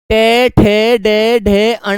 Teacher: टै ठ ड ढ ण को बेटा मूर्धा से बोला जाता है।